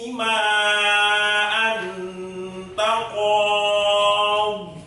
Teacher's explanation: Maksudnya yang baru itu ya karena diwakafkan tadi, sehingga lama bacanya atau panjangnya mat alif disukun itu boleh lebih dari satu alif, bisa 2 alif, bisa 2 alif setengah, atau 5 harokat